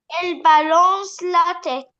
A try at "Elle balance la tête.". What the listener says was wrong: Bravo.